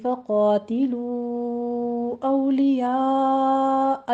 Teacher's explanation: فقاتلو میں مد منفصل جائز ہے، یہاں پر 4 کاؤنٹ کریں گے